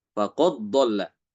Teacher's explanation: ketika ada di setelah dal itu datang huruf dot, maka dalnya itu diidghamkan ke dot. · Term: mengidghamkan